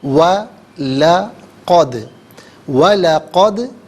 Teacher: قد میں دال ساکن ہے تو یہاں پر قلقلہ کیا جائے گا، کیونکہ یہ حرف قلقلہ ہے، آواز لوٹتی ہوئی محسوس ہونی چاہیے